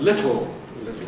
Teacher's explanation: the biggest problem seems to be when the [l] is syllabic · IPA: [ˈlɪtl̩ ]